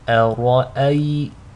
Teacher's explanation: make sure the hamza is light, the ra is heavy, and the second hamza is light.